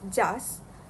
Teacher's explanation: The participant pronounce the word as just with uh with the final T dropped